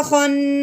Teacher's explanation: نون کے اوپر یہاں شاد آ گئی، ہم غنہ کریں گے